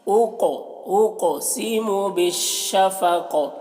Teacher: قوف میں قلقلہ کرنا ہے اور قوف کو پور پڑھنا ہے